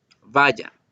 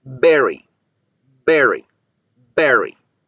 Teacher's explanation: la B bilabial vibra y explota y la V puede vibrar todo el tiempo que quiera y se alcanza a escuchar como la fricción.